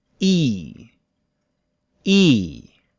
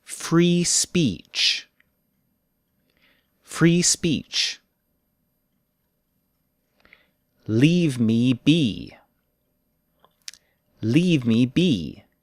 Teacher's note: tense vowel it is a little longer and for most english speakers the tongue rises while we say it